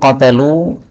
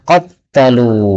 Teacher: qatalu boleh dibaca qattalu, berarti taknya ditambah tasdid